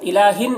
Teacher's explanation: تنوین کے بعد حمزہ ہے، حروف حلقی میں سے یہاں پر بھی اظہار ہوگا